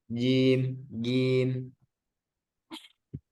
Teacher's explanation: di huruf jim nanti di jangan sampai keluar udara karena ini jahar. Jahar itu artinya tidak keluar udara.